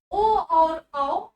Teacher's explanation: ओ और औ आपके कंठ और ओष्ठ से बोले जाते हैं। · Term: कंठोष्ठ